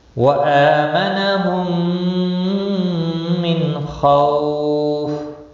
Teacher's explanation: خو واو لین ہے، تھوڑا نرمی کے ساتھ کھینچ کر ادا کریں گے